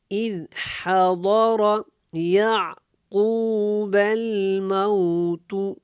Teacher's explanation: زال نرمی کے ساتھ ادا ہوگا، ضاد موٹا ہے، را بھی موٹا ہے